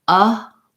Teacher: It sounds like and then the word pulse, what's hard about that is that the schwa goes into the dark L sound. And so for the L sound in pulse, what you need is to be able to keep the back of your tongue down, even though the front of your tongue is lifting up for the L